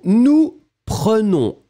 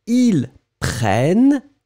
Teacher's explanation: double consonant, it will open the sound of the E. So you'll pronounce prenne, E.